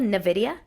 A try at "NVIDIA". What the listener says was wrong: No, it's N. There's too many consonants in there, so it's not Nivea.